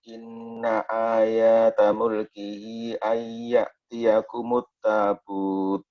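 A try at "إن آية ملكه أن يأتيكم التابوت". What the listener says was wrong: Jangan dipanjangin Pak, coba dirang lagi Pak apa? Ayata mulkihi, jangan dipanjangin tadi. Ayatannya ya antum panjangin.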